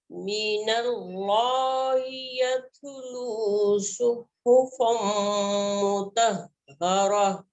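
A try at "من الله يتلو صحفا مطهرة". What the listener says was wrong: शाबाश, गुड, बारक अल्लाह फीकी।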